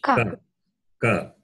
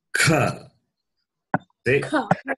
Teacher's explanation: It differs only in the expulsion of air, right? So, the first one is non-aspirate. The second one, ka, is aspirate. Aspirate is that where you expel more air.